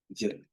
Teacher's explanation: It's pronounced by bringing the dorsum of the tongue very close to or in light contact with the anterior part of the dome of the palate, and it sounds a bit like the soft English J sound. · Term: voiced palatal approximant